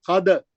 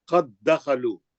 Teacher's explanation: ساکن کو ہی چھوڑ دینا, خلخلہ نہیں کرنا. قد دخلوا, مشدد دال میں چلے جانا, قد دخلوا, خلخلہ نہیں کرنا, قاعدہ بھی نہیں. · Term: ادغام متماثلین